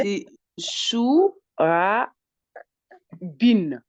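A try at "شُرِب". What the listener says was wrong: ok, c'est ça.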